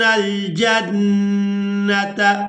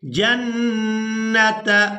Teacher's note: نون مشدد پر غنہ کریں گے، یعنی نون کی آواز کو کچھ دیر ناک میں رو کر رکھیں گے.